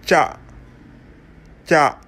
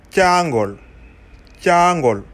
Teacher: Consonne qui se prononce la bouche fermée au début et avec un échappement d'air de la bouche à la fin. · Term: La plosive cha